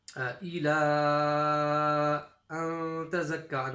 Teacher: So here this is the first mud that we've come across in this surah. It's a small mud, so it's a 3-second stretch.